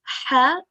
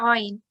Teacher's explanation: These are throat letters which should come from the middle of your throat.